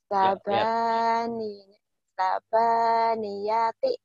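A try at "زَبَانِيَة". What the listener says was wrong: Zai, zai, sabah, sabah, sabaniati. Jangan dijoin, sabaniati. Sabaniati.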